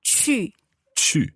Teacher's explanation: your lips are coming forward and your mouth is quite closed.